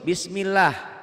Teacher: lafadz Allah dibaca tipis